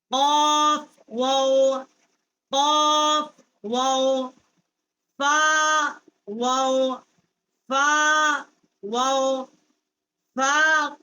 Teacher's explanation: فا جو ہے نیچے کے ہونٹ کا شکم اور ثنایا علیہ کا کنارہ، یہاں سے اس کا مخرج ہے · واو کا مخرج جو ہے دونوں ہونٹوں کے ناتمام ملنے سے یہ ادا ہوتا ہے